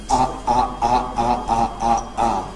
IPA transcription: ʔa, ʔa, ʔa, ʔa, ʔa, ʔa, ʔa